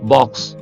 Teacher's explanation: మనం చెప్పుకుంటున్న ఈ సౌండ్ కూడా దవడని పూర్తిగా కిందకి దించి పలకాలి అయితే ఆ కి ఈ సౌండ్ కి తేడా ఏంటంటే ఈ సౌండ్ రౌండెడ్ లిప్స్ అన్నమాట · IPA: / ɒ /